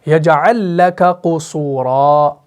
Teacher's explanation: قُصُورًا، کاف کے بعد قاف آ رہا ہے، یجعل لک قصورا، کاف آپ کا مرقق، قاف آپ کا مفخم